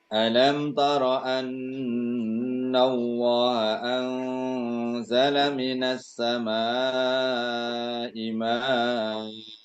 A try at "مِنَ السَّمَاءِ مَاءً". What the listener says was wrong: Ya, dibaca panjang 2 harokat ya. A-nya dibaca panjang 2 harokat. Minas sama'i ma'a. Namanya mad iwad ya.